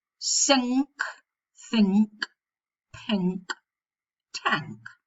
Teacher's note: Medially, it's very frequent, but we have to be very careful here, because if we find the sequence in ordinary spelling of the letters N and K, we'll always pronounce the K, and the nasal will be velar, because the K is velar. So you'll say sink, think, pink, tank. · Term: velar nasal